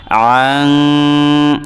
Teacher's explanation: এই নুন সাকিনটা আসলে নাকের ভিতরে গিয়ে উচ্চারণ হয় সরাসরি নুন উচ্চারণ হয় না আং এরকম আং আশা করি বুঝতেই পেরেছেন আন সালাতিহিম আল্লাযীনা হুম